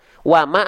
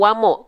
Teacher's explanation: kalau wama itu tipis vokal a kalau wamo vokal O berarti tebal